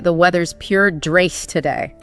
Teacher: Plus, you've got the Scottish rolled R, different vowel sounds. To someone used to say standard American English, it might sound almost like a different language.